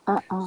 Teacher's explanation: You stop the air and it flows again. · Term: glottal stop